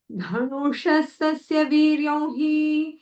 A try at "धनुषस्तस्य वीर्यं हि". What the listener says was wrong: धनु No, dhanu. Dental, न.